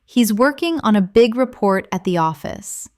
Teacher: Stress working big, report, and office.